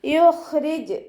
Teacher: കൽക്കലയുടെ letter അല്ലാത്തത് കൊണ്ട് half സുക്കൂന് കൊടുക്കാൻ ശ്രദ്ധിക്കുക കേട്ടോ. റ കെസ്റ ആയതുകൊണ്ട് താഴ്ത്തി ഉച്ചരിച്ചു കൊടുക്കുക, ലൈറ്റാക്കി കൊടുക്കുക.